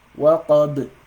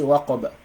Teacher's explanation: you're going to pronounce them with qalqala, with an echo. Waqab. So you don't say waqaba when you stop on this.